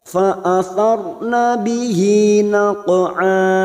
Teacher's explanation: Fa'athar ada huruf ra sukun yang sebelumnya fathah di sini, maka kita baca tafkim atau tebal. Ra sukun yang dibaca tafkim, ciri-ciri bibir kita itu seperti orang cemberut, ya, tidak senyum.